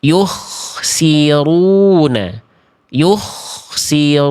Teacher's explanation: Ro dhamah dan fathah harus tebal. Maka dimonyongkan mulutnya, diangkat pangkal lidahnya.